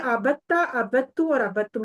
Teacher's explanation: تو پھر وہ کیا ہوتا ہے کہ دال کو بالکل سکپ کر دیا جاتا ہے، یعنی کہ سکون کی حالت میں خاص کر اگر دال آ رہی ہو تو اس کو سکپ کر کے تے کو ڈبل پڑھ لیا